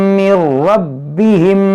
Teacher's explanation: मीम साकिन के बाद दूसरी मीम है, तो यहाँ पर इदगाम शफवी होगा